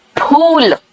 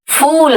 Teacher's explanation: ये दोनों होठ चिपकते हैं हिंदी में। फ इंग्लिश में फ देख रहे हो फ यानी हवा निकल रहा है दोनों होठ के बीच में से चिपक नहीं रहा है